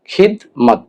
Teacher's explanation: এখানে খ এর উচ্চারণ ডিরেক্ট দর মধ্যে লেগেছে, অর্থাৎ খ রস্ব ইকার খি আর দ খিদ। দর উচ্চারণটা পরিপূর্ণ উচ্চারণ হচ্ছে না, অর্ধেক উচ্চারণ হচ্ছে। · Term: সাকিন